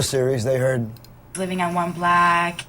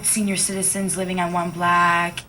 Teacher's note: this person is saying the word block the way they say black